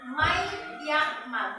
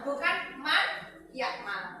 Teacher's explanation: Nunnya dimasukkan ke huruf berikutnya.